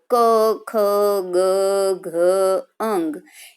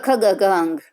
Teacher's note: એ કંઠ એટલે કે ગળામાંથી આમ સીધી જ હવા બહાર નીકળે છે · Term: કંઠ્ય